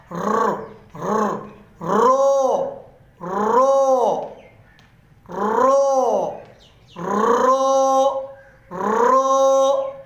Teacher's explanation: रो, रो, एक अलिफ के बराबर इसको खींचेंगे, ये 2 हरफी है, इसकी आवाज़ को मोटा भी करेंगे और इसकी आवाज़ के अंदर तकरार है, यानी बार बार ज़ुबान का हरकत देना, हरकत होना